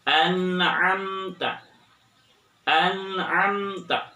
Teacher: harus jelas karena ini adalah idhar ya. Nun mati bertemu dengan huruf ain